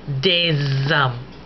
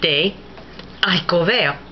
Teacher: the S did not align with the A of haricot. You had a glottal stop. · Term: aspirate H